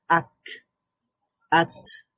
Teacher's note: এখানে আওয়াজ থেমে যাচ্ছে, কিন্তু আবার ওই যে হামস, যেহেতু হামস হওয়ার কারণে আবার বাতাস জারি থাকছে।